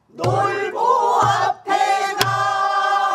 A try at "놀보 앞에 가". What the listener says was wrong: 그니까 그 말은 음이 처지지 말란 얘기지. 그렇게 길게 하라는 얘기가 아니가임. 놀보 앞에 가.